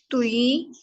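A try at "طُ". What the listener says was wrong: तुई नहीं, no no no, तुई नहीं होगा, वाव की साउंड नहीं आनी चाहिए। तुई, तुई। होंठों को गोल नहीं करेंगे, गोल करेंगे तो तुई वाली आवाज आएगी, वाव वाली साउंड आएगी। ठीक है, सिर्फ पेश पे होंठों को गोल करना है।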